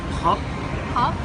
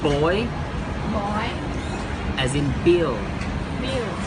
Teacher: The P and B sound are often studied as a pair because both sounds are produced in the front of the mouth with tongue in the same place. The difference is that the P sound will blow air out of your mouth and B sound you don't blow air out of your mouth. P is the voiceless and B is the voice.